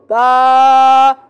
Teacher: अब ऊपर वाले का भी अंदर वाला हिस्सा जो है वो तर है यानी गीला है। तो दोनों होठों के गीले हिस्से से, तर हिस्से से बा अदा होता है। अब अदा करें, बा, पहले होठ को मिलाए तब जाके इंशाल्लाह आसानी से अदा होगा।